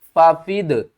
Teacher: ففدیۃ من صیام، ففدیۃ، یہ دال ساکن ہے، قلقلہ کریں گے یعنی دال کو ہلا کر پڑھیں گے۔